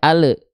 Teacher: huruf lam ketika sukun suka memantul ada bunyi vokal e di ujung pelafalannya